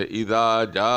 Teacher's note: ایک مد متصل ہے جو حروف مدے کے بعد اسی کلمے میں حمزہ آ جائے تو اس کو 4 سیکنڈ کے برابر کھینچیں گے